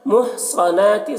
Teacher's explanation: صاد کو پر پڑھنا ہے، نون میں کھڑا زبر ایک الف کے برابر کھینچیں گے